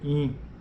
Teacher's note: a vogal nasal ela passa pela cavidade nasal